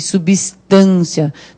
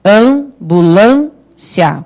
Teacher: Em ambulância, acontecem dois sons nasais. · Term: som nasal